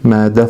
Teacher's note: Mədə sözündə ə saiti uzanır və mədə formasında tələffüz olunur.